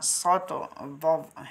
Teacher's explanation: مطلب اس صفت کا یہ ہے کہ ان حرفوں کو ادا کرتے وقت زبان کا بیچ اوپر تالو سے لپٹ جاتا ہے، جس کی وجہ سے یہ حروف خوب موٹے اور پر پڑے جاتے ہیں، اور ایسے حروف 4 ہیں جن کا مجموعہ صوت ضد ہے۔ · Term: حروف مطبقہ